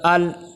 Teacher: اب اس آیت کے اندر سب سے پہلے حمزہ لام زبر ال، یہاں پہ اکثر بچے قلقلہ کر دیتے ہیں، قلقلہ نہیں ہونا چاہیے بلکہ آواز رک جائے